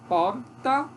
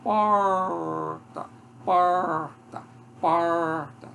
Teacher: Aí, no caso desse aqui, a retroflexa, a minha língua não chega a tocar, pode até tocar, mas ela se volta para trás